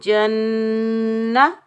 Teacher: یہاں ہم 1 الف کی مقدار غنہ کریں گے اور بغیر کھینچے پڑھیں گے